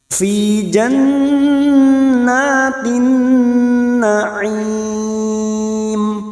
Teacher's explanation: Fi jan masuk pada huruf nun yang bertasdid, gunnah musaddadah 3 harokat kita dengungkan. Jannah, jannatin kita sesuaikan dengan tempo pada saat kita membaca.